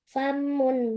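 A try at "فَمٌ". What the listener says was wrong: Famun, tidak ada tasydidnya. Famun.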